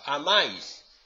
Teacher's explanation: las dos vocales forman parte de la misma sílaba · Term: diptongo